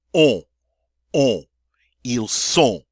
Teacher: Notice I hear neither the N nor the T. But because that O is followed by an N, which is a nasal consonant, I get to use a beautiful nasal sound.